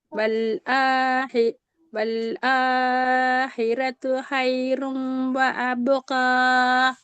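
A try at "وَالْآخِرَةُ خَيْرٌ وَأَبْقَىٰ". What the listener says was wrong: ஏன் ஆன்னு நின்றீங்க? அலிஃபுக்கு மேல என்ன நிக்குது? ஃபதஹ் மத் மட்டும்தான் நிக்குது. இப்ப நாங்க நீட்ட வேண்டியது ஒரு செகண்ட் தான். வல் ஆஹிரத்து.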